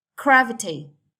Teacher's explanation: So, stress on the first syllable.